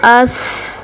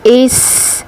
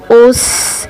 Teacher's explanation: और जब ये अदा होंगे तो सीटी की आवाज़ के साथ ये अदा होंगे। · हमारी ज़बान नीचे वाले दांतों के साथ टकराने के साथ साथ ऊपर वाले दांतों के से भी टकरा रही है।